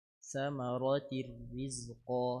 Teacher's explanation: تاء تنوين بالكسر مدغمة في الراء المكسورة بغير غنة